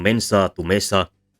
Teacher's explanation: a loss of nasal consonants before sibilant consonants